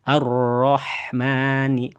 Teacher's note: Huruf ha ada di bagian tengah tenggorokan. Kemudian huruf mim ada di dua bibir. Kemudian huruf nun ada di bagian ujung lidah nempel ke langit-langit atas. · Huruf ro di ujung lidah naik ke langit-langit atas. Huruf ha ada di bagian tengah tenggorokan. Kemudian huruf mim ada di dua bibir.